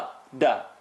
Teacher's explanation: Dal is tip of the tongue behind the top two teeth. A lot of people tend to take the tongue up.